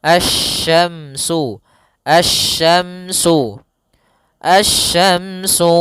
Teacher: langsung ke huruf syin makhrajnya dari tengah lidah kita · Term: huruf shin